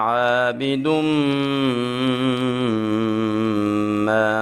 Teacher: میم مشدد ہے تو ہم یہاں پہ غنہ کر کے پڑھیں گے